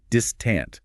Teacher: distant has the emphasis on the first syllable, distant, with a short I in the second syllable.